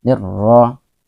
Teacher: ingat bahwa ra tetap dibaca tafkhim tebal karena dia berbaris fathah